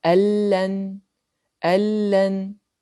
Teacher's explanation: Nous avons ici une lettre Nun Sakina dans un mot, suivie d'une des lettres du idgham, la lettre Lam. La lettre Nun fusionne avec la lettre du idgham, le Lam, pour ne donner qu'une seule lettre ayant une shadda, semblable à la deuxième lettre qui est la lettre Lam. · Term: Al-Idgham